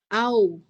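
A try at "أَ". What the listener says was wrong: Jangan au. Au keliru Ibu. A.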